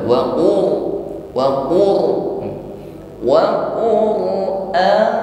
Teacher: huruf sukun ro di sini dibaca dengan tafkhim, huruf r-nya tebal, karena sebelum sukun ro ada dhammah, atau fathah atau dammah. · Masih ada getaran di ujung lidah dan getarannya terasa kuat.